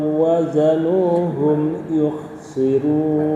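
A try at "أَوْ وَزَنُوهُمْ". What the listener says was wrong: Aunya jangan ringan ya, jangan ringan, sudah betul masuknya, tapi hentakan itu naber. Au kayak orang mendelik itu loh, kayak orang mendelik ya, mendelik ya. Wa idza kaluhum au wazanu ya, au wazanu ya, sekali lagi.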